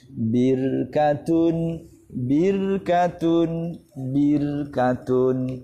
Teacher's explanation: sukun didahului kasrah maka dibaca tarqiq